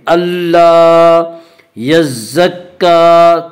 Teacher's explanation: کاف کے اوپر کھڑا زبر ہے، کھڑا زبر کو ایک الف کے برابر کھینچ کر پڑھیں گے